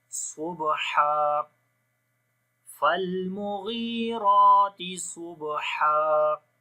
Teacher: ہا کو گلے کے درمیان والے حصے سے اور ہر حرف کی آواز کو کلیئر کر کے پڑھیں گے